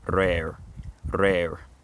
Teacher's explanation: The difference here is that there's evidence for more r trilled r's in Shakespeare's time, either in all positions in a word or a rolled r before a vowel and an approximant r after a vowel